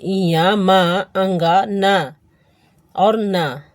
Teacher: ञ म अंगा न और न का उच्चारण स्थान कंठ तालु आदि के अतिरिक्त नासिका से भी होती है। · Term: नासिक्य वर्ण